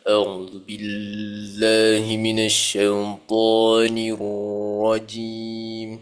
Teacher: Niru. Bagi bunyikan dia getaran dekat ra tu sikit.